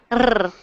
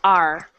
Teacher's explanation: So when you are doing the R sound, your tongue is not rolling. It is actually just back like this. So okay. My tongue is just back out of the way. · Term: the smooth R